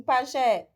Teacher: Aqui em pajé, a última sílaba é tônica, o jé. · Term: última sílaba tônica